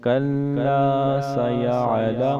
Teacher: لام کے اوپر تشدید ہے، اسے تھوڑا ہم سخت کر کے پڑھیں گے